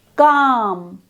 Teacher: This is therefore a back vowel sound. The highest point of tongue elevation is towards the back of the mouth, below the soft palate.